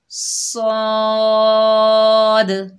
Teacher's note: 5 अलिफ की मिकदार खींचकर पढ़ेंगे और हुरूफ मुस्तालिया में से है मोटा अदा करेंगे। सौद को अदा करते वक्त हमारी आवाज़ ऊपर उठेगी।